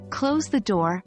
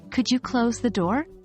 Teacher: the rising intonation on door indicates that it is a request rather than a firm instruction while rising in tonation in commands helps create a polite tone